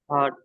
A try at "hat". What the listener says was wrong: हार्ट नहीं, HAT, ए का आवाज आएगा, हैट।